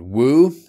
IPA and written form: wu: (woo)